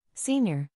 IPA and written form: sɪnˈjɪr (Senior)